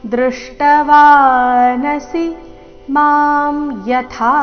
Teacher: ಕೊನೆಗೆ ಥ ಮಹಾಪ್ರಾಣ ದೀರ್ಘ